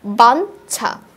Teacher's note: বাঞ্ছাটা যদি লক্ষ্য করি ইওর সাথে যখন ইওর সাথে ছ উচ্চারণ বা ছ যুক্ত হয়েছে, ইওর সাথে ছ, প্রথমটার সাথে ইওর সাথে চ যুক্ত হয়েছিল, দ্বিতীয়টাতে ইওর সাথে ছ যুক্ত হয়েছে। যখন ইওর সাথে ছ যুক্ত হয়েছে ইওটা উচ্চারণ হয়ে গেছে নয়ের মতো।